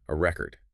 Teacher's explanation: If you emphasize the first syllable, it's a noun, a record. If you emphasize the second syllable, it's a verb, to record. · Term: word stress